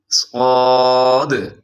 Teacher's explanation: حرف صاد جو ہے اس کو موٹا پڑھا جاتا ہے، اس میں آپ کے ہونٹ بھی گول نہیں ہونے چاہیے، اگر باریک کریں گے تو یہ سین کے ساتھ مل جائے گا جو اس سے ایک قدم پیچھے ہے، صاد۔